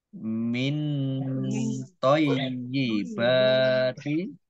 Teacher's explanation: nun sukun, bertemu dengan huruf to, bacaan ikhfa, dibaca samar-samar